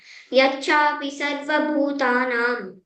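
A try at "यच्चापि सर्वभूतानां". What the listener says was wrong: చచ్చ కు పొక్క లేదమ్మి ఒత్తు లేదు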